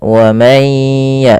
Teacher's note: sambil jangan lupa digunnahkan, masukkan ke rongga hidung sambil ditahan. Wa may ya, 2 harakat baru lepas. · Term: idgham bi gunnah